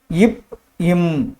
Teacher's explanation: மேல் உதடு கீழ் உதடு பொருந்துவதால் உருவாகிறது